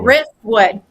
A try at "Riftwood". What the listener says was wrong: No, you're saying rift. Yeah, like guitar riff.